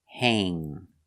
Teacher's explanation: when you have the combination of a n g you use the long a sound like pay and day